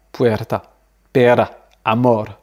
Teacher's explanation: C'est vraiment un R qui est balancé très rapidement.